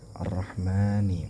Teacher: man-nya ini ialah panjang dua harakat